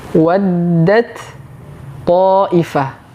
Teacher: huruf ta Yang sukun dimasukkan langsung ke huruf th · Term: idgham